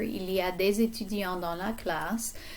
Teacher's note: Notice the liaison with the S and the E here.